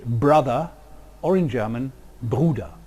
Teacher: in Germanic, the result is a simple voiced bilabial plosive, as in English brother or in German Bruder.